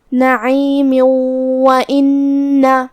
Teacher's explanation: لیکن یہ آیت کو اگلی آیت کے ساتھ پڑھے تو جو کہ کلمت نعیم کے آخری میں میم کے نیچے تنوین زیر ہے اور حرف الواو ہے کلمت وَإِنَّ میں، اور واو حروف الادغام بغنہ میں سے ہے، تو ہم یہ تنوین کو واو میں ملا کے غنہ اور تشدید کے ساتھ یہ حکم کو ادا کریں گے